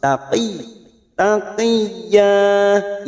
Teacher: sama masing-masing Ikfa Hakiki kita samarkan nun sukun di harakat in masuk huruf ya yang bertasdid tanpa ditekan lama-lama hanya masuk taqi taqiyah ya fathah tanwin yang dibaca waqaf namanya Mad iwad